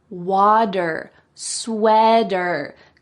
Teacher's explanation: In American English, that T will change to a D sound.